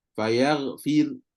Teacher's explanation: Waqaf dengan sukun biasa. Fayar fir, maka ra akan jadi nipis. Sebab apa? Ra mati. Kalau waqaf dengan ishmam pula sama, sebab dia pakai hukum waqaf.